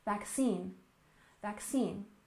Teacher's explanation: vaccine with a stress on the second syllable